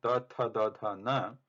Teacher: Ucharana sthanam is danta. They are dental letters.